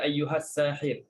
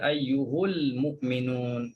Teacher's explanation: Kalau wasal lah, ha dibaca dengan baris depan. Ayyuha baca ayyuhu. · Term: ha baris depan